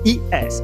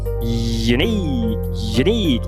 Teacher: Como se você tivesse i, ele causa uma fricção com seu palato